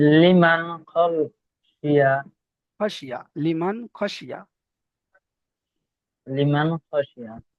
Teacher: নুন সাকিনের পরে হুরুফে হালকিনের 6টি অক্ষরের খ এসেছে, তাই নুনকে বিনা গুণনায় জাহির করে তাড়াতাড়ি পড়তে হবে।